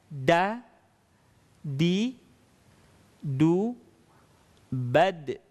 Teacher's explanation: Dengan satu catatan, mengucapkan huruf da dalam posisi sukun atau dalam posisi mati, maka ada suara pantulan yang harus terdengar.